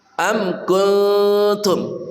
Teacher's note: Am kuntum, amku mimati bertemu kaf namanya izhar syafawi, dibaca dengan jelas tanpa jeda, tanpa dengung